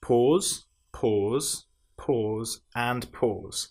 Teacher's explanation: these are all made with the long vowel sound o